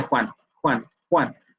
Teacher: el dorso de la lengua va a acercarse hacia el velo para producir las consonantes velar es como se ve el caso